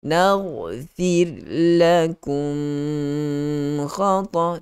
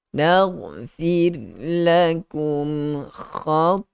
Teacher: Izhar syafawi. Sebut dengan jelas mim mati itu. Berikan sedikit sifat gunnah yang ada pada huruf mim mati itu. Tanpa memanjangkan dengung padanya.